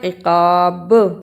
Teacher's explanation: قاف کو موٹا پڑھنا، قاف کے ساتھ الف ہے اس لیے اسے لمبا کرنا۔ عقاب با پہ قلقلہ کرنا